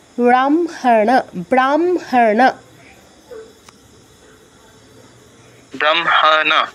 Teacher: স্থান পরিবর্তনের ফলে আমরা মটা অর্ধ উচ্চারণ করবো আর হটা পূর্ণ। মানে অনুনাসিক ধ্বনিটা আমরা অর্ধ উচ্চারণ করব আর হটা পুরোপুরি মানে পূর্ণ উচ্চারণ করব